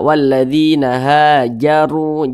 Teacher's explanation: huruf ra yang memiliki tanda baca dhammah dibaca tebal, dibaca tafkhim, sehingga pangkal lisan kita naik terangkat ke atas ketika kita mengucapkan yang ditebalkan. Ha walladzina hajaru, jaru ditebalkan.